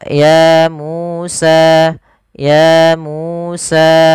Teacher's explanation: harus sama panjangnya sepanjang dua harakat